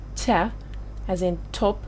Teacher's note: your tongue touches the alveolar ridge just behind your upper teeth